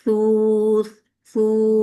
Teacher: ये इसमें आपने फोकस करना है कि आपका टिप ऑफ द टंग ऊपर के दो दांतों के सिरों को लग रहा है